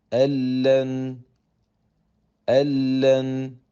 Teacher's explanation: both parts of the noon Sakina have merged into the lamb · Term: complete